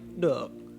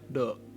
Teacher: in Hanoi, it starts around mid-range and quickly lowers, while in Saigon, it starts low and mostly stays low. For this tone, you also want to use creaky voice, so in that sense, it's pretty similar to huyen. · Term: nang